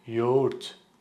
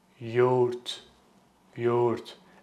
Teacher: the soft G in the middle. It basically makes the previous vowel longer. So whatever vowel that comes before soft G, you need to read that longer.